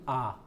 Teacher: पहला है विवृत, ओपन, जिन स्वर के उच्चारण में मुख द्वारा पूरा खुलता है